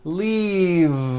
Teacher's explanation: throughout the whole word and voice the V leave like that if you stop the voicing at the end of the vowel e then you would be saying leaf with an unvoiced f · word is leave with a voiced V keep the voicing going throughout the whole word and voice the V